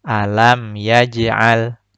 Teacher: Pantulannya kecil dan pantulannya tidak terputus karena tertutupi atau tertimpa dengan bacaan setelahnya. Tertimpa dengan bacaan al. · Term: qalqalah sughra